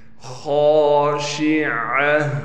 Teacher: خا کو موٹا پڑھنا ہے، خا کے بعد الف ہونے کی وجہ سے خا کو کھینچیں گے